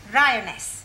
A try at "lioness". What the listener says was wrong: No, l. You're not saying it right. Try saying lioness. Well, in future, every time you see an L, pretend it's an R, right?